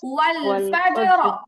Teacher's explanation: জিমে হচ্ছে কলকলা, তারপরে হচ্ছে র মোটা